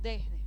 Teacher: por asimilación de la s que la vamos aspirando